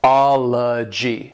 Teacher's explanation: And what makes this, I think, a little challenging is that you have these two O's right here. That first one is a short O sound, and the second O is more of a schwa sound.